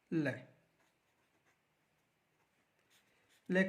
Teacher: देखो वे वर्ण जिनके उच्चारण में, वे वर्ण जिनके उच्चारण में वे वर्ण जिनके उच्चारण में जिह्वा मसूड़ों को छूती है, और हवा का प्रमुख वेग जिह्वा के आसपास या अगल बगल से निकल जाता है, पार्श्व वर्ण कहलाता है।